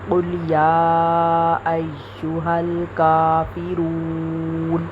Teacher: کاف کو پر پڑھیں گے کیونکہ یہ حروف مستعلیہ میں سے ہے